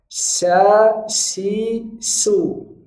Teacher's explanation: Huruf sin ini tengah lidah ke langit-langit. Bukan dengan memajukan bibir.